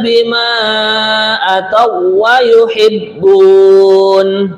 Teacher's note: di sini bima panjang empat harakat, mad jaiz munfasil